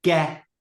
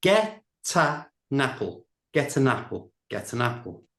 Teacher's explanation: that get has got a t sound. It's not a vowel sound. We're going to move it over to the front of the a. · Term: linking words together